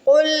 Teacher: قاف کو موٹا پڑھیں گے، قاف کے اوپر دو نقطے ہیں، دو نقطوں والا قاف موٹا پڑھتے ہیں۔